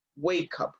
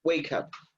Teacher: the last sound is k, k, k, and that's a consonant sound. And this is a vowel sound. So wake up, wake up. You link the two sounds.